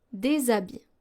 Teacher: So here we're pronouncing des habits, even though H is a consonant, but this is a silent H, which acts like a vowel.